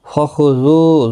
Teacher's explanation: ذو واو مدہ ہے، ایک الف کی مقدار کے برابر کھینچ کر پڑھیں گے۔ خا مستعلیہ ہے، پر پڑھا جائے گا۔